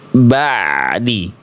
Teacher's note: Jadi bunyi ain itu ya diantar sedikit sampai menjumpai huruf setelah ain sukunnya.